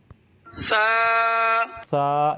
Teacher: سا جو ہے اس کو زبان کی نوک اور اوپر والے دانتوں کے کناروں کو ملائیں گے تب سا ادا ہوگا. لوگ اس کو سا پڑھ دیتے ہیں حالانکہ سیٹی نکلتی ہے.